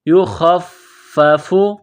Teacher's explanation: فا کو دبانا ہے، فا میں سختی کرنی ہے